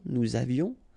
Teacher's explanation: final S not pronounced, and then little liaison